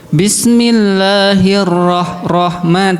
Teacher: Ee harus ada takrirnya dia sifatnya agak bergetar sedikit.